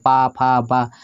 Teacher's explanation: टकराए और ओष्ठ मानी ओठों से बोले पा फ बा यानी आपके दोनों होठ इसी में टकरा रहे हैं